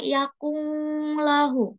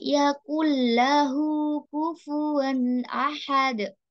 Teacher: nun bertemu dengan huruf lam, di sini langsung masuk ke lam. Nggak boleh dibaca yakunglahu. · diidghamkan ke dalam huruf berikutnya tapi tanpa gunnah atau tanpa dengung. Ya, gunnah artinya dengung tapi kalau idgham bila gunnah tanpa dengung masuk ke dalam huruf berikutnya tapi tidak dengan dengung.